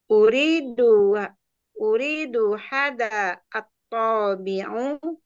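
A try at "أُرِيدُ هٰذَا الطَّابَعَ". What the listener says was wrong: Mbaknya fathah atau tidak? Taba'a, fathah buka mulutnya.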